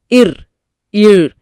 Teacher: நாக்கோட நுனியை லேசா மடிச்சு அண்ணத்தோட மேல் பகுதியில வச்சு எந்த அழுத்தமும் இல்லாம லேசா உரசணும். அந்த உரசல்தான் வருடுதல்.